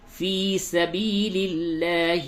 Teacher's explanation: دونوں جگہ پہ یا کو تھوڑا سا کھینچیے اور لام کو باریک کیجیے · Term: یا مدہ